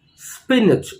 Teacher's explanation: the stress is on the first syllable or the first part of the word spinach